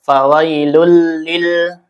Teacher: Ini lamnya lam mutlak. Jangan memantul dan jangan juga ditahan. · Dibaca idghamkan langsung ke lam ya. Lulil tanpa gunnah, tanpa ditahan ya. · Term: idgham bila gunnah